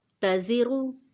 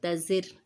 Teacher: تزرو میں را موٹا ہے، تزر میں باریک ہو گیا۔ زا میں خیال رکھیں سیٹی آنی چاہیے، سختی ہونی چاہیے۔